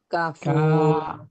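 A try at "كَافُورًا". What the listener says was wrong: Kanya panjang. Kafuro.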